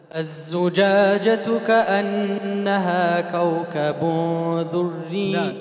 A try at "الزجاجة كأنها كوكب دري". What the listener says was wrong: دو. دو وليس الذو.